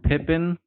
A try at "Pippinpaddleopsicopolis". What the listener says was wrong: You're saying Pippin with an M. It's an N.